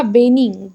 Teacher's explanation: छत्तीसगढ़ में व का जो उच्चारण है वो नहीं होता है बल्कि व को क्या उच्चारण करते हैं? ब करते हैं।